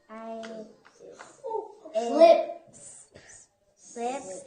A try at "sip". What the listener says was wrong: Okay, you're adding a o. There's no o. Let's just do the first two sounds. No o. Put them together. Sip.